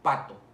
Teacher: no vibra aquí las cuerdas vocales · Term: sordas